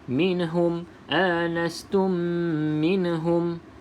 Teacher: hati-hati pada perkataan minhum, jangan lantunkan huruf min.